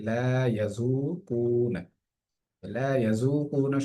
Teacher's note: লা ইয়াযুকুনা শব্দটির মধ্যে জালের মধ্যে এক আলিফ টান হবে, পেশের বাম পাশে যজমালা ওয়াও আসার কারণে।